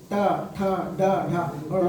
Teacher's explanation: मूर्धा का मतलब होता है जब हमारी जीभ तालु के ऊपर वाले भाग को स्पर्श करती है उसको मूर्धा कहते हैं। जैसे ट, तो जब टा बोलेंगे तो हमारी जीभ जो है जो छत होती है, हमारी जो मुख की जो छत होती है उसको स्पर्श करती है